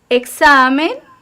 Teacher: tenemos la tonicidad en la penúltima sílaba, por tanto es una palabra llana